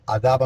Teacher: نون تنوین کے بعد حروف اظہار میں سے یہاں حمزہ آ گیا، یہاں اظہار ہو گیا